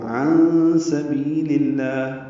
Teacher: نون ساکن کے بعد سین آنے کی وجہ سے اخفا ہے، عین وسط حلق سے ادا ہوگا